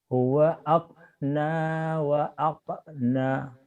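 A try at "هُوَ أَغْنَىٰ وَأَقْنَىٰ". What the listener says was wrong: Huwa jangan akna Pak. Jawa tuh kadang-kadang ngomong G mati sama angin mati susah. Ke K. Agnes, Agnina, Allahumma Agnina. Huwa aghna wa aqna.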